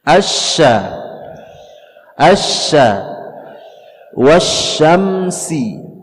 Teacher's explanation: Tengah lidah kita bertemu dengan langit-langit atas